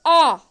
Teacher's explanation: जब आप आ का उच्चारण करोगे तो आपका जो पीछे का भाग है वो सक्रिय रहेगा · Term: पश्च स्वर